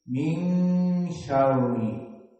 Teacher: Dan di sini hukumnya ikhfa, nun sakinah bertemu dengan sya, maka makhrajnya pindah kepada makhraj al-khaysum